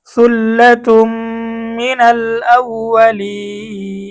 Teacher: এখানে এই জেরের পরে ইয়া সাকিন আসছে, মদের হরফের পরের হরফে আমরা থেমে গেছি, ওয়াকফ করে দিছি। সূত্র অনুযায়ী আমাদেরকে 3 আলিফ টানতে হবে। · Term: মধ্যে আরজি